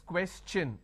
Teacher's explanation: When I have the word question, the tion becomes ch, n. So it becomes question.